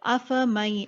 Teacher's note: نون نہیں پڑھیں گے ہم لوگ، ڈائریکٹلی میم اور یا ملا دیں گے، مرج کریں گے. ادغام اسے ہی کہتے ہیں.